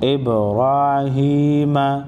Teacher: با ساکن پر قلقلہ کریں گے